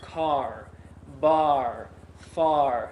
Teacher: Some people think it helps to think about the R sound being a little bit more back in the throat